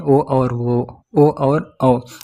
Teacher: ओ और औ कंठ ओष्ठ से मिलकर बने होते हैं, इसलिए कंठोष्ठ वर्ण कहते हैं